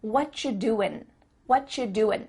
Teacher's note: the end of the word doing, that G, also gets cut out.